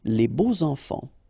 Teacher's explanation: even if you've got this X, well, phonetically, it will be like Z, so like if it would be an S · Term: liaison